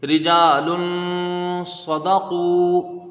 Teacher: صاد کو جلدی پڑھا جائے گا، زبر ہے، دال کو بھی جلدی پڑھیں گے، زبر ہے، قاف با پیش قو، یہاں واو ساکن سے پہلے پیش ہے، واو مدہ ہے تو یہاں پر اس کی ایک الف کی مقدار رکھیں گے، یہ مد اصلی بھی اس کو کہتے ہیں، رجال صدقوا، اس طرح سے اس کو مشق کرنا ہے۔